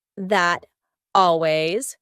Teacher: This isn't always done, but it's often done when native speakers are talking quickly. We link together words by making the final T change into a D.